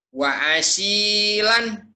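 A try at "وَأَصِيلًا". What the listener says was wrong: ini mah ulah digitukan wa asin. Ini mah bukan ain, ini mah alif.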